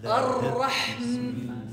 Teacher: closing the mouth causes the ghunna